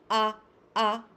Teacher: So that little slappy sound that is right at the onset, that is called glottal attack. · So that sound is the vocal folds slapping together really hard. The prephonetic gap is too less and the mucosa is slapping together hard.